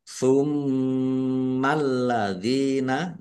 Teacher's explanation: lamnya dibaca dobel ada tasdidnya